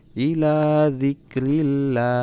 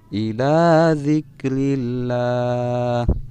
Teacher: ada lafaz Allah atau lafzul jalalah yang didahului oleh huruf yang berharakat kasrah, maka bacaannya kata Allahnya harus dibaca tipis